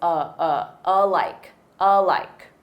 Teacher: that letter A is unstressed and the syllable stress is on like so. It's alike, alike.